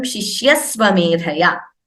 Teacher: So an extra s, instead of the visarga, we say shishyasvamedhaya. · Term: visarga sandhi